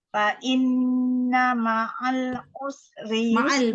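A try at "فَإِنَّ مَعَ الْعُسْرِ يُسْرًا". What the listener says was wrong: Ma'al tu lebih lama sikit. Lam tu bainiyah.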